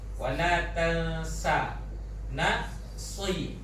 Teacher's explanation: Jadi pada huruf sin tu tak boleh tebal lah, kerana sin tu nipis lah.